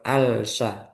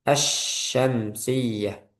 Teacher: al nggak dibaca, nggak jelas. Nah, itu namanya diidghamkan ke huruf setelahnya yaitu shin.